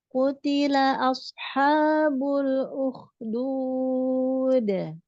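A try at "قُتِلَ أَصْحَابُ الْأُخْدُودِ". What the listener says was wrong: Ashabul ukhdud. Ke bawah. Ashabul nggak bol. Ashabu. Di kebawahkan ya. Arah ke bawah.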